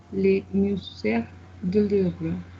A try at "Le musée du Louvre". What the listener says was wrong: Le musée du Louvre. No me pronuncie la R porque acá no tenemos esto. Le musée du Louvre.